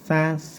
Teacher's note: ujung lidah ditempelkan di gusi atas nih, sa atau di 2 gigi seri